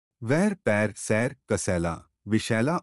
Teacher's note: यह अर्ध विवृत ह्रस्व अग्र स्वर है